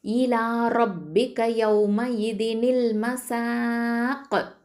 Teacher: இந்த சீன் அப்படிங்கிறது தரஃபுல் சன் நுனினாவை எழுத்து, காஃப் தம்மா கு, இதை வந்து வக்ஃபு பண்ணும்போது காஃபு சுக்கூனாகும், கல்கலை கொடுக்கணும்